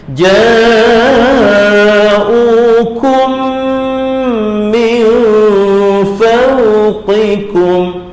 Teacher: tak boleh dibunyikan mim yang pertama tu, terus masuk mim yang kedua satu harakat, kemudian panjangkan 2 harakat